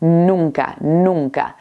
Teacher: Pronunciamos las N's de forma distintas. En la primera N, la lengua va detrás de los dientes